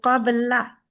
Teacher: ला जो है ना बारीक है उसके लिए मुंह अपना स्माइली कर देंगे कबला कबला बा के ऊपर पहुंचते ही आपकी स्माइल आ जानी